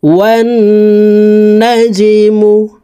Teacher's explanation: এখানে জিম হরফ কলকলার হরফ নিচের দিকে ধাবিত করে ধাক্কা দিয়ে উচ্চারণ করতে হবে।